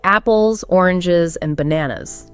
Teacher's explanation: You usually rise on each item except the last one.